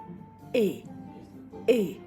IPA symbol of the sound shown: ɛ